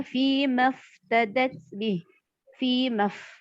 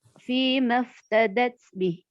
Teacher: Mafnya ini kita baca pendek, dianggap 1 harokat walaupun ma-nya ada alifnya ya, ada tanda panjang 2 harokat di situ.